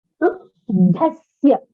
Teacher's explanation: it is a mahaprana dha. So you have to pronounce it with a little bit of force.